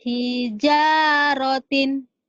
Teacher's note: Jimnya kurang tebal ya, kurang keras.